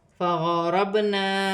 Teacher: وقف کی صورت میں 2 زبر کی تنوین پہ وقف کی صورت میں 1 زبر گر جائے گا اور 1 زبر 1 الف مدہ میں بدل جائے گا. فغربنا، با ساکن ہے، با پر قلقلہ پیدا ہوگا اور را کی حرکت کے ساتھ ملا کر پڑھا جائے گا اور را موٹی پڑھی جائے گی. زبر کی حرکت ہے، الف مدہ بن رہا ہے، یہاں 1 الف کی مقدار کھینچ کر پڑھا جائے گا.